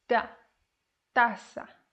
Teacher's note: T is softer than in English without the aspiration.